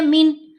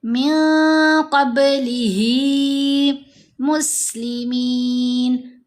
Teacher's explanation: जब नून साकिन या तनवीन के बाद इन 15 हरूफ में से कोई हरफ आ जाए, तो हमने नून की आवाज़ को नाक में छुपा कर पढ़ना है। सही है, नून को ज़ाहिर नहीं करना। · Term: इख्फ़ा